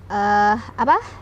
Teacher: Yu-nya ada hamzah sukun, ditekan ya hamzah sukunnya. Ditonjok tapi udah nggak ada sisa gitu ya, nggak ada ekor.